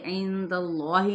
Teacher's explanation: اس میں جلالہ کا جو لام ہے وہ موٹا ادا کیا جائے گا